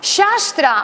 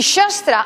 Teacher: Shastra, amb A llarga, és escriptura. Y shastra, amb A breu, es objeto cortante